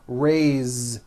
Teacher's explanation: it's pronounced with a voiced Z.